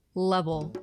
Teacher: But the L at the end of the word is a dark L, where the tip of the tongue might not even touch the top of your mouth at all. A dark L is where the back of the tongue is moving up towards the soft palate, and it gives it a sort of O-ish sound, so like an O.